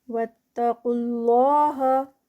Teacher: قاف ہیوی اور آگے لفظ جلالہ بھی ہیوی کیونکہ اس سے پہلے پیش آ گئی ہے